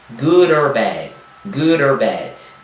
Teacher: Então o D aqui, né, vai se encontrar, no caso aí, digamos como se fosse uma única palavra, good or, né? Então o D, como vocês já devem ter percebido, no meio de palavras ele tem a tendência a soar como R · o D, como vocês já devem ter percebido, no meio de palavras ele tem a tendência a soar como R, né? Então good or bad.